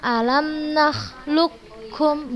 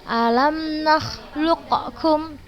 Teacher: Artinya semua sifat huruf qaf diidghamkan ke huruf kaf tanpa tersisa. Jadi kita bacanya alam nakhluqkum, bukan alam nakhluqkum, bukan seperti itu, tapi langsung kita masukkan ke huruf kafnya semuanya tanpa tersisa. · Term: idgham kamil